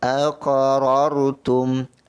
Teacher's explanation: Ra yang pertama tebal, ra yang kedua pun tebal. Kerana ra yang pertama berbaris atas, ra yang kedua sukun, yang mana sebelumnya ada satu lagi huruf yang berbaris atas.